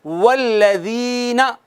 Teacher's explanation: اب والذین میں یا ساکن ہے، ما قبل مکسور ہے، تو یہ یائے مدہ ہو گئی، والذین ایک الف کے برابر